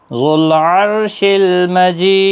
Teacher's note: را ساکن سے پہلے زبر ہے اس لیے پور پڑا جائے گا